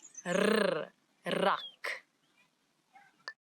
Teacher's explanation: it's the rrr, as if your tongue is jumping up and down in your mouth